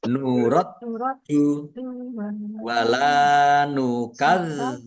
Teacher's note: Mat tobi'i masing-masing dibaca panjang 2 harokat. Nuraddu dalnya dibaca double ada tasdidnya, ditekan biar tampak doublenya